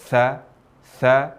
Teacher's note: ketika mengucapkan huruf tha ini disertai dengan aliran nafas. Tha, tha yang disebut dengan hams.